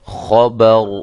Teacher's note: را کو میں نے موٹا کیا ہے، را کے اوپر جب ہم نے وقف کیا تو را ساکنہ ہو گئی